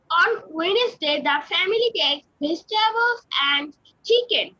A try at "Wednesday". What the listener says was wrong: ওয়েডনেসডে হবে না Wednesday understand everyone understand this ওয়েডনেসডে ওয়েডনেসডে ওকে নাও রাবাব আমাদেরকে পড়াবে রাবাব